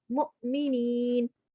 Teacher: تو یہ وہی والے فائدہ آ گیا یہ والا کہ ہم نے یہاں پہ واو کو نہیں پڑھنا، ہم نے یہاں پہ حمزہ کو پڑھنا ہے، اور جہاں پہ حمزہ کے اوپر جزم ہوگی تو ہم نے اس کو جھٹکا مار کے پڑھنا ہے